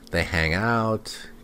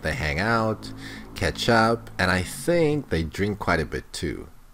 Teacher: if you're listing things the first item should be said with an upward inflection the second one upward inflection and then at the end down